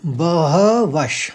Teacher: अब ये श क्यों आया देखिए, उसके आगे वाली लाइन में, आगे वाले शब्द में श है, शूरा। इसलिए जो विसर्ग है, विसर्ग का उच्चारण हमने बहवश कहा